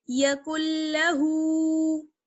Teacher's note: تشدید کے ساتھ ملا لیتے ہیں تو ہم کاف کو لام سے ملائیں گے اور نون کو ختم کر دیں گے. کاف لام پیش کل.